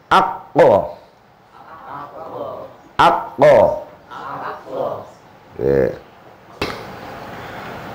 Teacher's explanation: Jadi makhraj khamis itu lesan lidah yang paling pol sing jejeran kalian tenggorokan. Terus urute langit-langit daripada apa jenenge mulut yang paling paling dalam.